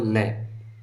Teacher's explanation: ला कह लो या दांतों से जब उच्चारित होती है तो तालू जो होता है हमारा उसके अगल बगल से जो है हवा निकल जाती है तो उसको बोलते हैं पार्श्विक वर्ण